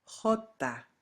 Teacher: in Spain, it'll be more of a guttural sound